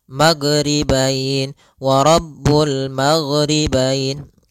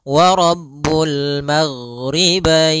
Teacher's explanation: huruf ghain tidak ada sifat qalqalah, tidak ada sifat pantulan.